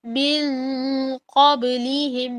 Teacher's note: یہاں پر من قبلہم میں آپ کو موٹا اخفا کرنا ہے